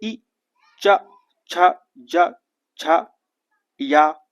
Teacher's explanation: जीवा जो होती है आपकी वो तालु को क्या करती है? स्पर्श करती है। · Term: तालव्य वर्ण